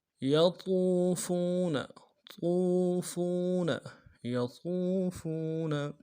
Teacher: واو ساکن واو مدہ ہے، واو ساکن واو مدہ کو ایک الف دال میں کھینچیں گے۔ فا کو واو کے سامنے لانا ہے، یہ بھی واو مدہ، اس کو بھی ایک الف دال میں کھینچیں گے۔